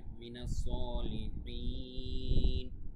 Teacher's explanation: মানে মাদ্দা এখানে এসেছে কিন্তু আমরা এর পরের অক্ষরেফ করছি এজন্য এখানে মাদ্দা আরজি হয়ে যাবে তিন আলিফ টান হয়ে যাবে